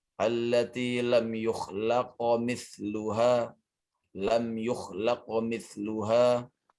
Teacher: Diberikan hak qalqalahnya pada huruf qaf.